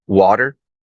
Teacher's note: it's not even like an actually pronounced T it's it's just replaced with a guttural